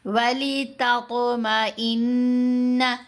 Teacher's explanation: جعلہ اللہ الا بشرا وَلِتَطْمَئِنَّ، یہاں پر 2 آوازیں مماثلت رکھتی ہیں، تا باریک آواز جس کے اوپر 2 نقطے ہیں، تا، اور یہ ہے طا موٹی آواز فل ماؤتھ کے ساتھ پڑھی جانے والی